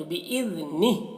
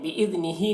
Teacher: बिइज़निह, दाल को बारीक अदा करना है और यहाँ पर देखिए जीम अलामत है वक्फ की, यहाँ पर ठहरेंगे। जब ठहरेंगे तो ये हा के नीचे जो खड़ी ज़ेर है ये सुकून से बदल जाएगी, तो बिइज़निह हो जाएगा।